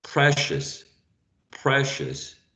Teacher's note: the last uh syllable contains a schwa